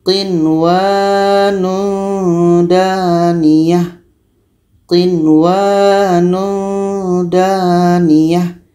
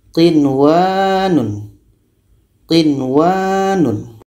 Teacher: Jadi ini tidak dengung, nun jelas, wa pun jelas. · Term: izhar wajib